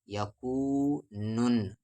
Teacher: یا کو واو میں یو، میم پہ زبر ما یوما، یا پہ زبر یا، کاف کے ساتھ واو کو، نو کو نام ہے یکونن، نون پہ تشدید ہے یعنی غنہ ہوگا